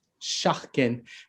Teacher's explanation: Because the S is next to an E, it goes sh, right? That becomes like a slender S instead of just s.